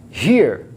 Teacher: এ এবং এই দুটি ভাওয়েল সাউন্ড মিলে হচ্ছে এর। একটি বিষয় খেয়াল করুন, এখানে কিন্তু র সাউন্ডটি সামান্য একটু উচ্চারিত হচ্ছে, বাকি পুরোটাই অনুচ্চারিত থেকে যাচ্ছে। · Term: ডাবল ভাওয়েল সাউন্ডস